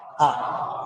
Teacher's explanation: विवृत का मतलब होता है मुख का सर्वाधिक खुलना और मुख सर्वाधिक खुलता है आ में।